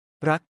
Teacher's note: In formal Thai, this is slightly rolled, but in everyday speech, most Thais pronounce it as L